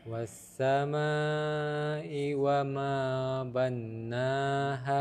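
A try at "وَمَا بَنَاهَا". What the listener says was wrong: Nah, bana jangan ditasydid. Banaha.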